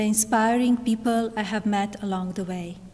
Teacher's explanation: she has pronounced that without aspiration in the word people